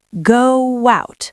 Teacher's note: If you say it slowly, go out, your lips naturally form a W sound in the middle. Go out. This happens in both British and American English.